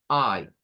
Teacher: Una A abierta con una I entrecerrada. Entonces, tendríamos ahí o una I corta.